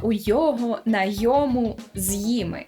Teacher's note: Зникає оце от протетичне ни